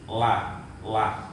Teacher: La kanan boleh, la ke kiri juga tidak masalah. Ujung tepi lidah samping kanan atau kiri dan menepati dengan langit-langit mulut yang atas. Jadi permukaan lidah ini misalnya lidah, kemudian ini permukaan yang sebelah kanan ini ditetapkan ke langit-langit yang atas. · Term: huruf lam